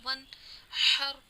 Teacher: نون ساکن کے بعد اظہار حلقی میں سے حا آ رہا ہے، تو ہم یہاں غنہ نہیں کریں گے، نون کی آواز ظاہر ہوگی